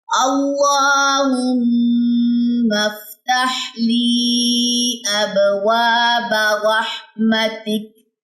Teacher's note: کاف کی زبر ڈراپ کر دے، اس پہ جزم آ جائے گی، تک پڑھا جائے گا، کاف میں بھی ہمس ہے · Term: وقف